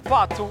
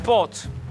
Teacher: este A vai tão para trás que fica O